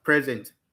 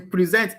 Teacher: In the verb form, the stress is on sent. It's on sent.